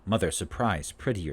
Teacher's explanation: the lip should be relaxed slightly open not rounded or spread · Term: er sound